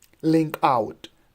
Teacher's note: Ling would be unstressed and out would be stressed.